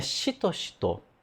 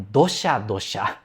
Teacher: claramente a intensidade do som é diferente, porque tem a distinção dos sons surdas e sonoras